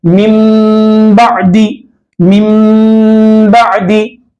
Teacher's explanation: नून की आवाज नहीं आएंगी, मीम की आवाज आएंगे